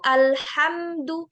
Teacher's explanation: Kalau izhar itu alhamdu, mimnya jelas, nggak hilang.